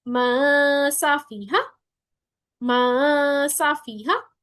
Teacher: नून की आवाज मुकम्मल जाहिर नहीं हो रही लेकिन सिफ्त बाकी है उसकी · सीन की दफा हम जुबान की नोक को नीचे वाले दांतों पे लगाएंगे और इफा करेंगे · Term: इफवा